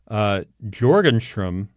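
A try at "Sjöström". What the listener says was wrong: No, I think the J takes on an H sound. Sjostrom.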